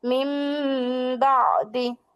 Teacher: যেহেতু নুন সাকিন ও তানবিনের পরে বা ইকলাবের হরফ পেয়েছি, তাহলে উক্ত নুন সাকিন বা তানবিনকে আমাদের মিম দ্বারা পরিবর্তন করে পড়তে হবে। তাই মিম না পড়ে এখানে পড়বো মিম, মিম বাদি।